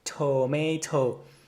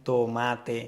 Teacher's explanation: with your mouth when you're pronouncing the word tomato tomato you could feel that there's quite a lot of air coming out when you pronounce it that t sound and this is a characteristic of the English language as well